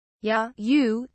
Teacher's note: the first syllable is lower in pitch than the second · the ya syllable is not necessarily technically low as you might guess. In fact, it is only mid-low. Similarly, the second syllable, U, is only mid-high. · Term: normal rising pitch